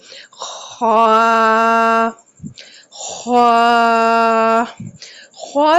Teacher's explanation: खौख की अदायगी हलक के पहले हिस्सा से की जाती है। हलक का पहला हिस्सा ख का मखरिज है। · ख को अदा करते वक्त आवाज बिल्कुल स्ट्रेट हो, सीधी हो और कोई भी खम महसूस ना हो। ख्वा की अदायगी करते वक्त खरनाटे की आवाज महसूस होनी चाहिए। खरनाटा होना चाहिए गले में। ख्वा ख्वा ख्वा जो है हरूफ मुस्तालिया में से है। · خا کی ادائیگی کرتے وقت خرناٹے کی آواز محسوس ہونی چاہیے، خرناٹا ہونا چاہیے گلے میں۔